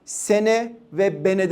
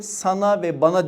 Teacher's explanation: E'lerin a olması var ya bir ünlü değişim örneğidir.